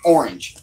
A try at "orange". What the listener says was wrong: There are two syllables in that word. It's orange.